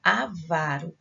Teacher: o avaro, a sílaba tônica é a penúltima. Então, ela é uma palavra paroxítona.